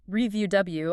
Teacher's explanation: To review, review, also stress on the second syllable, means to look at something again.